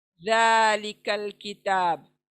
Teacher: जबान दांतों को, सामने के दांतों के सिरे से लगेंगी, और तब ये ज़ालिकल किताब, सॉफ्ट एकदम।